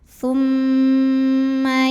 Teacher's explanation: Kemudian ada hukum gunnah musyaddadah atau hukum gunnah aja ya, atau mim musyaddadah atau wajibul gunnah. Karena mim bertasydid, maka cara bacanya dengung. M-nya tahan kurang lebih 2 harokat.